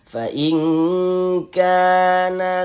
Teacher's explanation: Maka huruf yang memiliki harakat kasrah dibaca panjang. Sehingganya dzi kita baca panjang. Mad thabi'i panjang dua harakat.